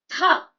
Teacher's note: when we add a strong air or a h sound in our previous consonant ta, it becomes tha